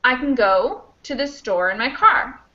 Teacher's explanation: kind of squish all these words together and in that case can gets kind of squished away because it's not the main verb